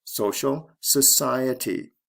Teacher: stress goes from the first to the second syllable there is no double i here instead the ity ending is